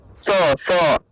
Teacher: আমরা যখন ছাতা লিখি কিন্তু কি ছ উচ্চারণ করি, তার দন্তস্ব উচ্চারণটা কিন্তু ছ হবে না, দন্তস্ব উচ্চারণটা হলো স, স দন্তবর্ণ দাঁত দিয়ে উচ্চারণ করতে হবে, স, অর্থাৎ ইংরেজি এস ও স এর মতো, ইংরেজি স শব্দের মতো, স, স।